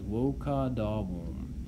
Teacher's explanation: Notice it ends with a vowel, a long A in this case